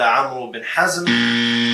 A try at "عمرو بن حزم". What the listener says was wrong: It's Amr bin Hazm. Amr, not Amru. The waw is silent, ya jahil.